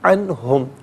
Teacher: اس پر اظہار کرتے ہیں، غنہ یا اخفا نہیں کیا جاتا۔ اسے نارملی پڑھیں گے عنہم، اسے عنہم نہیں، یہ غلط ہے،